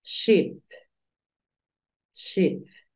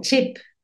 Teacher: La sh es un poquito más suave. Es como cuando le decimos a alguien que haga silencio. Entonces tú dices ship.